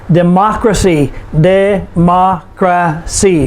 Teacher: we put the stress on the third to the last syllable which is ma democracy uncertainty uncertainty four syllables the third to